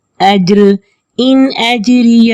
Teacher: رو کو باریک پڑھیں گے کیونکہ رو کے نیچے زیر ہے